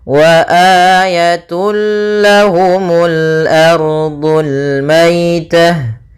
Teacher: Idgham artinya memasukkan, bila gunnah artinya tanpa gunnah. Maka dia masuk saja ke lam, dan di sini idghamnya idgham kamil. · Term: idgham bila gunnah